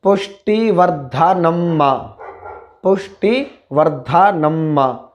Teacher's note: शा मूर्धन्य शकार टा से जुड़ा है, मूर्धन्य शकार आधा है और टा पूरा है, तो उसी परिस्थिति में इसका उच्चारण शा हुआ है। यदि ठा होता तब भी इसका उच्चारण शा ही होता।